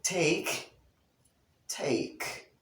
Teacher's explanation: the tip of the tongue goes into contact with the alveolar ridge